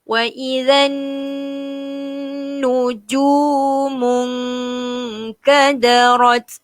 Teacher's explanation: Wa idzan nujumun. Wa idzan nun ada syaddah. Perlu didengungkan.